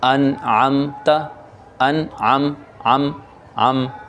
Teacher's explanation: آپ نے میم کے اندر غنہ نہیں کرنا، بلکہ میم کو ظاہر کر کے پڑھنا ہے